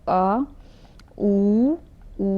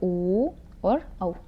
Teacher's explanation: फिर लास्ट में आपका आता है पश्च, पश्च क्या होता है आपका, ये लास्ट में आता है आ ऊ, ऊ बोल के देखो, पीछे तक साउंड जा रही है